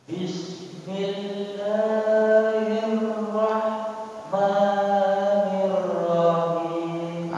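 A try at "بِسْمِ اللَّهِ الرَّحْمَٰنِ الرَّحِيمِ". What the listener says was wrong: Huruf ha-hi-nya jangan diseret. Bismillahi. Jangan bismillahi. Itu diseret namanya tuh. Tapi bismillahi. Bismillahi. Bismillahirrahmanirrahim.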